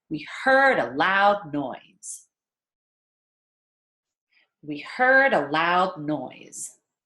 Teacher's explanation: rushing through we rushing through and stressing our content words our verb heard our adjective loud and our noun noise